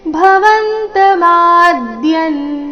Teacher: ಆಘಾತ ಭವಂತ ಮಾದ್ಯನ್ ಭವಂತ ಮಾದ್ಯನ್ ಶಬ್ದದಲ್ಲಿ ಮ ಅಕ್ಷರ ಮಾತ್ರ ದೀರ್ಘ ಇದೆ ಮ ದೀರ್ಘ ಹೇಳಿ ಅದರ ಮೇಲೆ ಆಘಾತ ಬರಬೇಕು